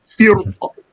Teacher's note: And in this case, it is the qaf, matching the ra with the heaviness of the qaf. As for the lightness, it is for the kasra in the qaf, as well as the kasra in front of the ra. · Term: heavy